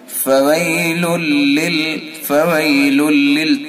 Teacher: فويل للمصلين، فويل ادغام تام کریں گے، یہ تنوین کے بعد لام ہے تو اس میں ادغام تام ہوتا ہے، یعنی مکمل ادغام